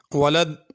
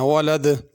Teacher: ولد پہ قلقلہ کرنا ہے، یعنی دال کو تھوڑی سی جنبش دے کے حرکت دے کے پڑھنی ہے